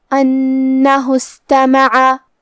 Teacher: کلمت استماع میں تا پہ اور میم پہ اور عین پہ زبر ہے تو ہم یہ تینوں زبر کو برابر سے ادا کریں گے اور حرف العین کو حلق کے درمیان والے حصے سے پڑھیں گے